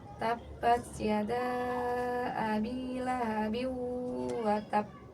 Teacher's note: Untuk qalqalah akbar, cara membacanya ditahan sebentar, sejenak baru dipantulkan ya.